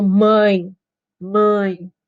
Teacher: o ar ele vai escapar pelo nariz ele não escapa pela boca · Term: sons nasais